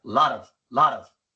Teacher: la flap T en inglés es cuando la T se pronuncia como una R. En español. Se pronuncia así en varias situaciones.